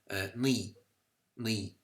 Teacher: there's that unrounded back closed or high vowel. The I, ne.